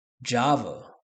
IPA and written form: ˈdʒɑːvə (Java)